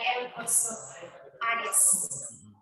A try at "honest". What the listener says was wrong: Kok hanya dibaca lagi? Honest. Hanya nggak dibaca. Honest.